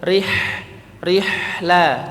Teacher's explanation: huruf ha tipis dan dia rakhawah mengalir